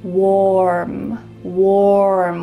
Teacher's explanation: Notice how my lips are in an O shape. Warm. Warm with a clear R.